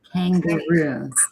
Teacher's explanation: The K and the G. It's velar. It's way in the back of the throat.